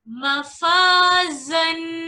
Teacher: ज़ा पर यहाँ किस चीज की आवाज आएगी? सीटी की आवाज आएगी। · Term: सीटी वाले हुरूफ